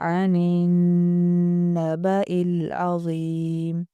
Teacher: نون اور میم کی شد کو ایک جیسا لمبا کرتے ہیں